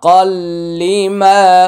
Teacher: সদ্দি মুসদ্দি কফ লাম জবর কল লাম জের লি কল্লি কল্লি তানুইন এর পরে লাম আসছে ইদগামি বিলা গুন্না গুন্না হবে না